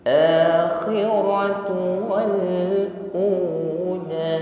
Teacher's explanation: Antara u dengan la panjangnya sama.